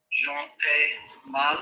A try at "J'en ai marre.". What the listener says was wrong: Don't stress the phrasal verb that you very cleverly conjugated.